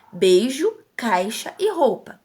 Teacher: encontro de dois sons vocálicos na mesma sílaba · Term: ditongo